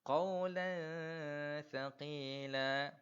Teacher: Tanwin tersebut saya tak jelaskan tapi saya dengungkan dan memasukkan huruf tanwin tersebut ke dalam huruf tha tadi tu. Saya masukkan huruf tanwin ini ke dalam huruf tha dekat sini. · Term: dengung ataupun memasukkan